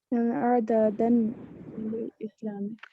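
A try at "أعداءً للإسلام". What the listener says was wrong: یہ حمزہ، یہ دال نہیں، یہ حمزہ ہے. اعداء ان،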